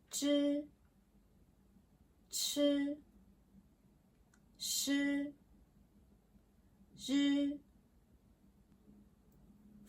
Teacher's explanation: For these sounds, your tongue goes up and back. Think of your tongue curving slightly upward.